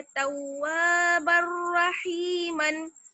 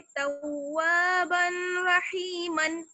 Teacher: तव्वाबर रहीमन, बा पर देखिए तनवीन है और उसके बाद रा मुशद्दद यानी रा पर तशदीद लगी हुई है, तो तनवीन की जो साउंड है वो बिल्कुल गायब हो जाएगी, यानी बिल्कुल बिना गुन्ना के साफ करके पढ़ेंगे, बगैर गुन्ना के पढ़ेंगे। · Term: इदगाम बिला गुन्ना